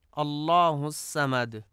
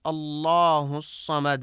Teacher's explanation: الصمد کی صاد کو سین پڑھا جاتا ہے، اللہ الصمد، جو کہ درست نہیں ہے، اور درست ادائیگی اللہ الصمد ہے۔